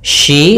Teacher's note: hati-hati jangan dibaca si karena di sini huruf shin.